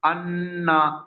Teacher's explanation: নুন তাসদিক আর মিম তাসদিক কে একালিপ পরিমাণ গুণনা করে পড়তে আলিফ হয়। আলিফ পরিমাণ গুণা করে পড়তে হয়।